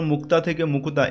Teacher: মুক্তা থেকে মুকুতা এখানে মধ্য স্বরাগম হয়েছে, ঠিক আছে, মাঝখানে এই যে হ্রস্ব স্বরধ্বনির আগমন হয়েছে। বরফ শব্দটিতে আছে দুটি দল রুদ্ধদল আর মুক্তদল, 3টি দল মুক্তদল রুদ্ধদল, 2টি দল রুদ্ধদল, 2টি দল মুক্তদল রুদ্ধদল।